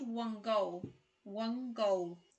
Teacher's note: when N is followed by the G sound, the N becomes ng